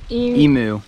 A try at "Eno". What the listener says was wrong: Eno. It's pronounced Eno, not Enu. Eno.